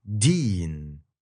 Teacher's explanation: in the English word, the very tip of your tongue hits your alveolar ridge, that ridge right behind your upper front teeth